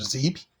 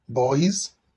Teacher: Z is a voice sound, and it is at the beginning of zip, at the end of auspices, at the end of boys, and in visa.